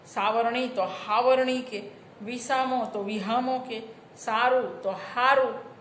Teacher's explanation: ગુજરાતીમાં એક અઘોષ હ બોલાય છે ખરો, પણ એ બોલીની કક્ષાએ છે. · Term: હ શ્રુતિ